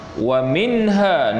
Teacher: Wa minha, nun mati bertemu dengan ha, izhar halqi, izhar halqi. yakni dizahirkan sebutan nun mati tanpa dengung